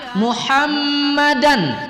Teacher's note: mim bertasydid kita lamakan sedikit dengan mendengungkannya